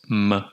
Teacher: It is a nasal. M is made by releasing sound through the nose, and you bring your lips together to generate this m sound.